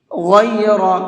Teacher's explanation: غین کو بھی اور را کو بھی، دونوں حرف کو منہ بھر کے پڑھیں گے۔ اخراج، یہاں پر خا کو اور را کو، دونوں حرفوں کو پر کر کے پڑھیں گے، منہ بھر کے پڑھیں گے۔